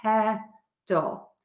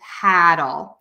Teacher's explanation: For paddle, my mouth is more open, and that means the tip of my tongue can get lower in my mouth, and then that will change that vowel. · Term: very open American ah